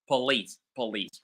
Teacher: The whole syllable po is reduced into p.